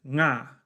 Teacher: a sound like /ng/ in song can only be found at the ends of words in English, but in Na vi they can come at the beginning